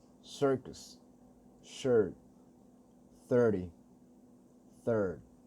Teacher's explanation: All these words have Rhotic Schwa in it